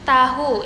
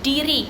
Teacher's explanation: apiko alviolar ini melibatkan ujung lidah yang ditempelkan pada gusi